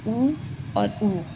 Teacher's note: दोनों के उच्चारण में ओष्ठ की जो स्थिति है वो गोलाकार रहती है तो ऊ वृत्तमुखी है।